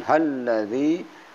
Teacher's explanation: ada tasdid sehingga dibacanya ya ayu halladzi ada tasdid ditahan halladzi, kemudian ada ya mati matomi halladzi 2 harakat.